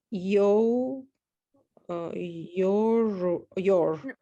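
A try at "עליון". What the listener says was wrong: nope, there's no R in there. L, yon.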